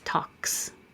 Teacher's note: Talk. K is voiceless, so keep your voice off, and it's talks.